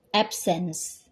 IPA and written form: ˈæbsəns (Absence)